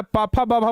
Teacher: आप बिना होठ सटाए पापाफा बाबा बोल ही नहीं सकते हैं